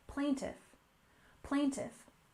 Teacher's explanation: we have plaintiff with stress on the first syllable